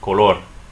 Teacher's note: color two syllables stress the last syllable